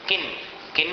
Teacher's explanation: किन में अनुस्वार का उच्चारण है न के समान